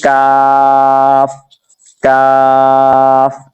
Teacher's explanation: اسی طرح اگر آپ دیکھتے ہیں یہ کاف نیچے والا، یہ کیسے ادا ہونا ہے؟ یہ زبان کی جڑ اور تعلق کے سخت حصے سے ادا ہوتا ہے